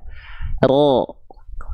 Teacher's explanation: ro itu dilafalkan bukan betul-betul dari ujung lidahnya banget teman-teman sekalian tapi huruf ro itu dilafalkan dari bagian punggung lidah punggung lidah itu bagi yang mana nih ini punggung lidah ya